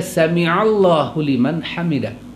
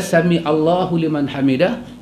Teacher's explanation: Pasal sin mim ain, ain tu masuk terus dalam lam dengan idgham kamil.